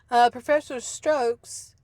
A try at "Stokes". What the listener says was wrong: I think you said strokes. It's Stokes.